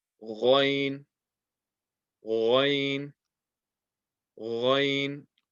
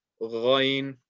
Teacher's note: This letter is from the top of the throat. This is a heavy letter as well